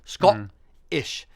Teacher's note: So if you're saying Scottish, if you're actually Scottish, you're saying the O like ought. So you're saying Scottish, and you're having a hard guttural stop, a hard guttural T, like Scottish.